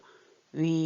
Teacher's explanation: 우하고 이가 같이 들어서 우이 하다 이걸 좀 짧게 발음하면서 위, 입 모양은 우 같은데 이 같으면서도 위 이렇게 나올 수 있죠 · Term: 이중모음